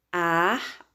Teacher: Na palavra armazéns, armazéns, sílaba mais forte, zens. Oxítona terminada em ens, deve ser acentuada.